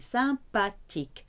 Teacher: There is no th sound th in French, it's a hard T.